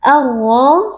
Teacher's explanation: Alif lamnya dibaca dengan lebur ke dalam huruf ro arro ro merupakan Huruf tebal kita angkat pangkal lidah kemudian kita · ra Alif lamnya dibaca dengan lebur ke dalam huruf ro arro ro merupakan Huruf tebal kita angkat pangkal lidah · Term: alif lam asyamsiyah